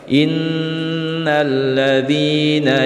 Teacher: huruf sebelumnya adalah berharokat kasroh cara bacanya dibaca panjang dua harokat